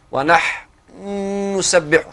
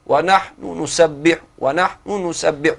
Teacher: يعني الروم المعبر عنه بالاختلاس، يعني اختلاس، اختلس جزء من الحركة، من حركة الحرف المدغم، حتى يسهل يعني نطق هذه الكلمة ولا تثقل على اللسان لتوالي السكون فيها.